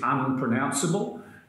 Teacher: with a change in point of articulation between the n and the p